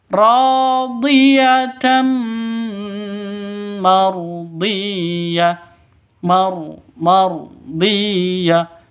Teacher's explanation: riatan marhiah Mar marhah tanwin rhiatan mardhiah tanwin bertemu dengan mim cara bacanya masuk ke mim disertai dengung dua ketukan Kenapa karena idgham bunah Idam bunah dua dua ketukan cara bacanya